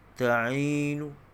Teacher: Maknanya tak dimatikan nun tu, dibacakan dengan baris dhammah, tapi sedikit saja bunyi dhammahnya. Itu disebut sebagai bacaan raum.